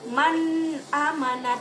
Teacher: tidak ada dengungan yang timbul di situ karena dibacanya dengan jelas